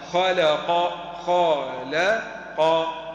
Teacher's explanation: رقق اللام بين مفخمين اللام هي بين مفخمين بين الخاء المفخمه وبين ماذا؟ القاف المفخمه